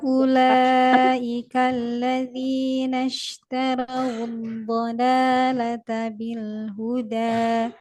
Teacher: Dayanya jangan terlalu panjang, cukup 2 harokat saja